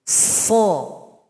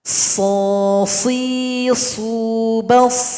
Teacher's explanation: Sifat khusus pada huruf shad sama dengan huruf sin. Punya sifat sofir. Ada bunyi yang tajam. Itu namanya sofir.